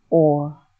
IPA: ɔr